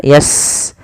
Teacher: Kemudian yastaftihuna 'alal ladzina kafaru. Sin punya sifat namanya hamas, alirkan nafasnya yas.